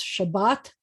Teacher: the accent's on the second syllable